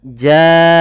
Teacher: panjangkan huruf ja sepanjang 4 harakat atau 5 harakat, karena pada saat ini ada bacaan berupa mad wajib muttasil. · mim di sini harus dijelaskan karena dia ada bacaan izhar syafawi